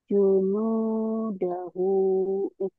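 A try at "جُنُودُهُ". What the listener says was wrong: Junuduhu. Iya, bukan dahu ya. Junuduhu.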